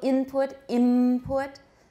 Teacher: we go from an alveolar consonant to a bilabial